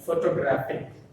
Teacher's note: The stress is on the graphic, graph.